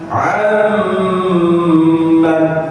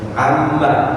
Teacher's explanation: Kalau nun sukun bertemu mim, dia harus masuk ke rongga hidung. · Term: idgham biguna